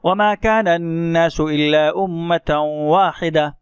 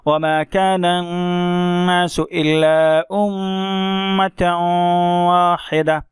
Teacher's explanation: ہم نے تھوڑی دیر ناک میں جو ہے نون کی آواز کو رکھا اور اسی طرح میم کی آواز کو رکھا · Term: غنہ